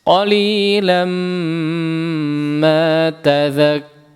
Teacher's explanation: Idgham bi gunnah, tanwin ketemu mim, ya. Maka silahkan digunnahkan dengan gunnah yang panjang.